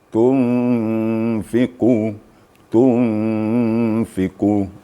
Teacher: Nun mati bertemu fa. Jadi sekitar 2 sampai 3 ketukan. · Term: ikhfa hakiki